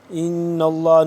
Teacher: لام زبر نل، لام کھڑا زبر لا، ان اللہ، ان اللہ نون ہے یہاں پہ مشدد تو اس پہ غنہ ہوگا